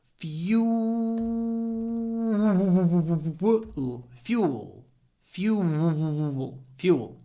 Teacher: try to get lots of w into this word